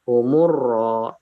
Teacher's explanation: jadi lamnya tidak dibaca, tetapi dari mim langsung ke huruf ro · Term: Alif lam syamsiyah